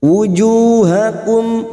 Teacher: Wujuh duma diikuti wawu sukun 2 harokat mad tabi'i. Wujuhakum mim sukun bertemu wawu idhar safawi dibaca jelas tanpa mendengung